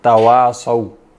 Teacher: تا باریک ہوگی اور صاد موٹی ہوگی